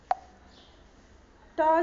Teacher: ट जो है वो मूर्धन्य वर्ण है